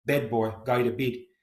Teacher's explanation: But for New Zealand and to some extent South African accents, the short A is raised, the tongue is higher in the mouth, so A becomes eh